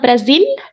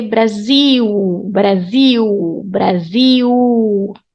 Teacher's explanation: So the consonant L has the U sound as well when it comes at the end. It's not Brazil.